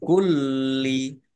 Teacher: lamnya dibaca dobel ada tasdidnya biar tampak dobel maka ditekan